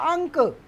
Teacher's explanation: इसका उच्चारण क्या है नाक से होता है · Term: अनुस्वार